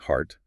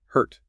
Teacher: My jaw drops open for the organ heart. Then my jaw snaps up and my tongue curls for the pain.